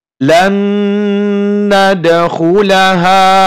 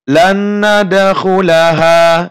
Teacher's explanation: Maka kita dengungkan dan ditahan selama 2 harokat.